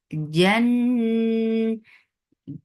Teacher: This unna is akmal, so keep the sound in your nose for a longer time. Na, two counts long.